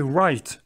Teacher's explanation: Ici, vous prononcez pas le W. Ou à peine.